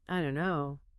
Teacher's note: Or it's greatly reduced, sometimes becoming a glottle stop. And the vowel sound in don't can also change or become less distinct, more centralized, what linguists call reduction to schwa or nearwa.